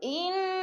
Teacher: ان کی نون مشدد ہے، غنہ کریں گے، جما کے سختی سے پڑھیں گے، اور تھوڑا سا رک کر